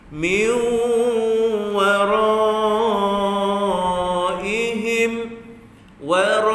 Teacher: Masukkan bunyi nun itu kepada waw, satu harakat. Masuk satu harakat, dua harakat panjang. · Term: idgham